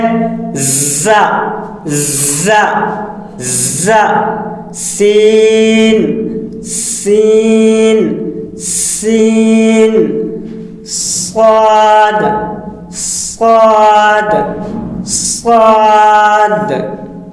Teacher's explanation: ز، سین، صاد، زبان کی نوک اور سامنے کے اوپر نیچے والے 4 دانتوں کے کنارے سے ادا ہوتے ہیں